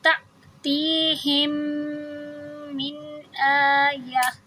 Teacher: وقف کریں گے تو یہ آیتن کے بجائے آیہ ہو جائے گا